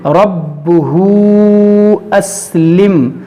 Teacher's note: قَالَ لَهُ رَبُّهُ أَسْلِمْ، یہاں پر دیکھیں الٹا پیش ہے، اور الٹا پیش کے بعد جو ہے یہاں پر حمزہ دوسرے کلمے میں ہے، تو یہاں پر مد منفصل کریں گے، کھینچیں گے